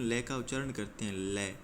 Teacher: जो हमारी जीभ का अगला भाग है वो मसूड़े को छूता है और जो फेफड़ों से बाहर निकलने वाली हवा है वो जीभ के अगल-बगल से बाहर निकल जाती है। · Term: पार्श्विक व्यंजन